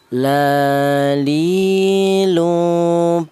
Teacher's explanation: huruf lam ini keluarnya huruf berasal dari ujung lidah menyentuh langit-langit mulut ya.